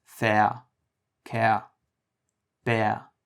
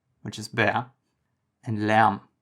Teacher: Again, this vowel happens in your mouth in the middle between A and E.